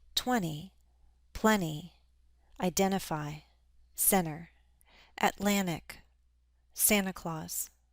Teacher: we often drop the T after an N